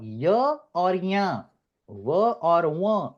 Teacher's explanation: So ya, va, and la can also be pronounced either with the nose or without the nose.